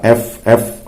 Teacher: yang kena f, ya, gigi atas dengan bibir bawah, ya. Gigi atas dengan, maka ini disebutnya bunyi syafahiyah asnaniyah atau labiodental. · Syafatun bibir, sinun atau asnan gigi. Jadi perpaduan antara bibir dengan gigi. Bibir labio, sinun denta, jadi labiodental.